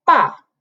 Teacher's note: the fourth tone which is like um uh descending line